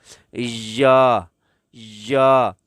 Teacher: یہ یا آپ کے زبان کا درمیان اور اوپر کے تالو کے درمیان سے یہ یا ادا ہوتا ہے